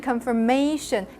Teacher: The stress is actually in the may part. So that syllable is actually not stressed.